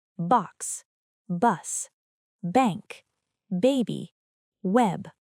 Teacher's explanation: This is a voiced sound. Your lips close, then release with vibration. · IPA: /b/